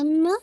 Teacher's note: अम्मा आपका most complete गुन्ना है और इसमें आपने मुकम्मल 2 काउंट आपने होल्ड करना है।